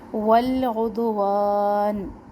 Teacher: ول میں لام ساکن کا دھیان رکھے، ہلے نہیں، اور دال ساکن ہلنا چاہیے کیونکہ حروف قلقلہ میں سے ہیں